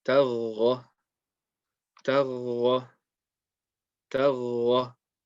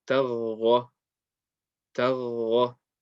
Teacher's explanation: You're holding on to the sound of the ghain from the top of the throat, and then you just saying it with the fatha.